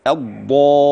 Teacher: كلمة الضالين محتاجة تظبيط شوية، الضاد واللام المشددة تبان